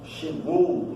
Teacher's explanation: Você tem duas vogais sonoras na mesma sílaba, dá para escutar o som do O e o som do U. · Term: ditongo